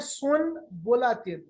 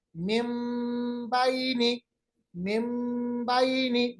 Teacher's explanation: नून की आवाज को बिल्कुल हमने मीम में तब्दील किया है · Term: इकलाब